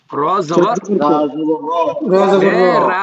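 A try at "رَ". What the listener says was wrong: রা হয় না, রা হলে তো আপনি জবর দিয়ে দিয়েছেন,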